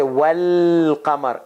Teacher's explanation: you have to connect wow with lam and you say well kamar and alif goes away there is no ah no welcome regularly you say al-qamar regularly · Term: moon letters